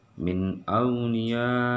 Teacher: nun mati bertemu dengan alif, ia dibaca jelas. Ini hukum bacanya adalah nun mati bertemu alif, dia baca hukum izhar ya, izhar.